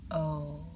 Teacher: Round your lips, almost like you're getting ready to blow out a candle. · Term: long O